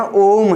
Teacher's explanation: जब हम ओम का उच्चारण करते हैं तो प्राय यहाँ पर 3 मात्राओं के उच्चारण जितना समय लगता है, इसीलिए हम इसे प्लुत स्वर या त्रिमात्रिक स्वर भी कहते हैं।